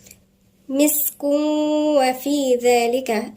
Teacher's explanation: الذال هنا من الحروف اللثوية وبعديها في ألف صغيرة اللي هو مد طبيعي مقدار حركتين.